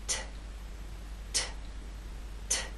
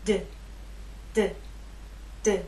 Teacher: There is more air released. There's a puff, a strong puff with the T. That strong puff is not present with the D. · These 2 consonant sounds are made basically the same way, but T is quiet, it's unvoiced, and D is voiced. So you'll feel no vibrations when you make the true T sound.